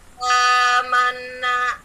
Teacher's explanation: itu mad badal dibaca 2 harokat atau 2 ketukan